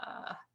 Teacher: that gravelly kind of vocal quality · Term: glottal fry